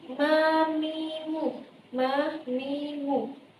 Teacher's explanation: apabila ia diucapkan maka makhrajnya itu terletak pada dua bibir